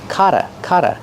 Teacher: the Double T makes a fast D sound because it's between vowels Potter Potter Pottery then use the